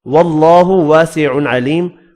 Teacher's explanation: اللہ کا نام یہاں بھی زبر کی وجہ سے پر پڑھیں گے